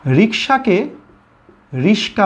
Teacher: দুইটা ব্যঞ্জন ধ্বনি পাশাপাশি স্থানটা পরিবর্তন করে নিয়েছে। ক এর জায়গায় স চলে গেছে, স এর জায়গায় ক চলে গেছে। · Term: ধ্বনি বিপর্যয়